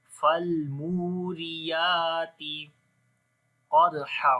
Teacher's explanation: قاف کو موٹا پڑھیں گے، حروف استعلاء میں سے، دال کے اوپر قلقلہ کریں گے، 5 حروف قلقلہ ہے، اتوب جد، قاف طا با جیم دال۔